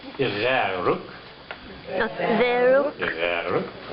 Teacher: It's a guttural G.